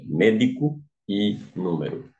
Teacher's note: proparoxítonas aqui quando recai na antepenúltima sílaba